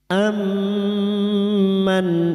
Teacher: memasukkan atau mentasdidkan dua mim masuk pada huruf mim berikutnya disertai mendengung selama 3 harakat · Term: idgham mimi